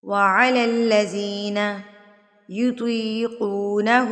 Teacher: الٹا پیش کو آپ نے ایک حرکت کے برابر کھینچ کے پڑھنا ہے